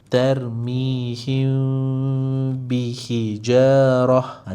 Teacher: Jadi tadi kita kena sembunyikan mim beserta dengung. Jadi sembunyikan mim bermaksud jangan sebut huruf mim. Bermaksud jangan tutup bibir. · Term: ikhfa syafawi